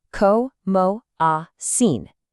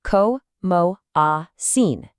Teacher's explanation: Give it a little bit more energy on the first and last syllables.